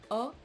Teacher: the letter O can also be pronounced a bit more like the name of this letter in English, actually more open